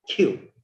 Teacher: because ka comes in the initial position of the word or the syllable, so the ka sound will be aspirated. Q. It will sound like Q.